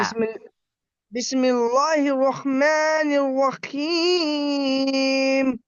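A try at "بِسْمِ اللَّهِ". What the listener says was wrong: বিসমিল্লাহ, ল হবে না। বিস,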